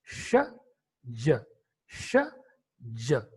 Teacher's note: the active articulator, that is tongue, raises towards the alveolar ridge · There is a minor gap at the palato-alveolar, and the pulmonic air that is coming from the lungs is released through that particular very minor gap. And that's why we are in a position to produce these two sounds, that is sh, j, sh, j. · Especially this consonant, that is sh, and the another one, that is j, both are the palato-alveolar fricative consonants.